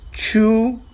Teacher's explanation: Chu is a first tone character meaning it's a constant level tone